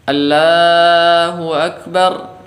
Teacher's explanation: Kesalahan yang pertama yang sering terjadi yaitu pada lafzul jalalah Allah ini ditipiskan.